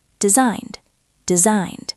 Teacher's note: Designed ends with an N sound, so the past tense is a soft D.